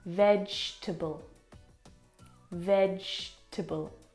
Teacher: We don't pronounce that second syllable.